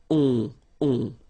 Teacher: you don't pronounce the final s, you get the on sound. Okay, nasal in your nose, on. All right.